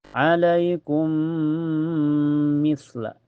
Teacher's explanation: Ini juga bisa disebut idgham kamil ya karena masuknya dengan sempurna. Cara bacanya ditahan sampai terasa ke hidung ya. · Cara bacanya mim pertama dimasukkan ke mim yang kedua dengan sempurna. Ini juga bisa disebut idgham kamil ya, karena masuknya dengan sempurna. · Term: idgham mutamatsilan